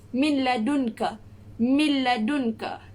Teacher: kita leburkan huruf nun tu dan kita masuk ke dalam huruf lam tanpa dengung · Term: idgham bila gunnah